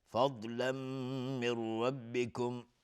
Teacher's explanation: ضاد هم باز از حروف استعلاست، غلیظ تلفظ میشه